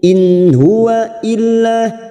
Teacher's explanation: nun sukun bertemu ha, idhar halqi. Kita baca jelas tanpa mendengung.